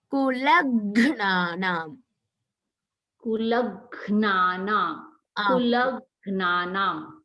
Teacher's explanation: Here the la is full and the gha is half.